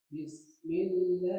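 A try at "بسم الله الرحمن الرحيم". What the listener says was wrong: Nah, itu jangan tergesa-gesa. Selesai dulu. Di apa alirkan dulu. Bismillahirrahmanirrahim.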